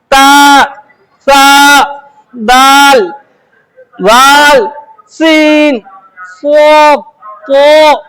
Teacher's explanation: जुबान की नोक को दांत की जड़ों में डालकर निकालते हो। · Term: हुरूफ-ए- इस्नाई